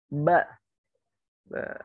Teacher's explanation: Iya, jadi huruf ba tidak mengeluarkan angin. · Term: syiddah